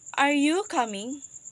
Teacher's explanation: So in the word you, our voice is fall down, and then in the word coming, our voice is rise up. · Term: polarized intonation